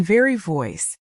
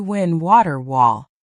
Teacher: V uses teeth and lip. W uses round lips.